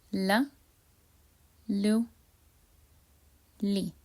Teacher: the articulation of lam happens when the tip of the tongue meets the upper incisors, and it's very similar to the L sound in English.